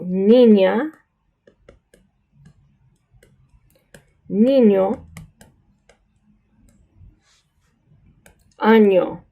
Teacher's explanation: it comes through your nose in like almost saying canon in English